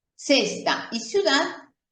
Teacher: en toda América Latina, nosotros pronunciamos C seguida de E y C seguida de I como si fuera la letra S o el sonido de la letra S, de la palabra sol, por ejemplo, que se escribe con S.